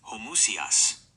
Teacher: English speakers naturally tend to smash the middle vowels together, turning homoousios into a 4-syllable word, homoousios. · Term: anglicized slur